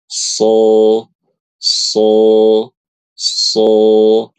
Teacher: ketika membaca huruf shad, pangkal lidah kita naik sehingga hurufnya tebal. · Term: huruf sod